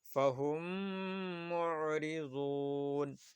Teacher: میم ساکن کے بعد دوسری میم آئے تو کیا ہوگی؟ ادغام شفوی ہوگی. اس کو ایک الف کے برابر گننا کر کے پڑھیں گے.